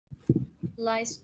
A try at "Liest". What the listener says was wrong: Betul, tapi bacanya bukan lies ya, lis.